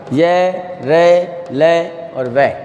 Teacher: इनके उच्चारण में स्वर से थोड़ा ज़्यादा समय लगता है, लेकिन अन्य व्यंजनों से इनमें कम समय लगता है · इनमें प्रमुख विशेषता ये है कि इनका उच्चारण करते समय हमारी जो जीभ है वो मुख के किसी भी भाग को स्पर्श नहीं करती। जिन वर्णों के उच्चारण में जीभ मुख के किसी भाग को स्पर्श नहीं करती और इनका जो उच्चारण है स्वर व व्यंजन के मध्य का सा लगता है। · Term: अंतस्थ व्यंजन